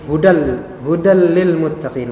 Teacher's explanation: Huda Lil Muttaqin dileburkan di sini ada tanwin ketemu dengan lam tanwin ketemu dengan lam jadinya diidghamkan ke lam